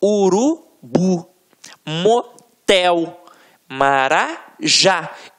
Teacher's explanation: você vai perceber que realmente a pronúncia da última sílaba ficará mais forte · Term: oxi tona